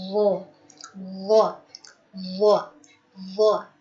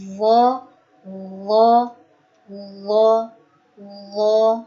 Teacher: Yang betul adalah wo, wo tanpa memonyongkan bibirnya.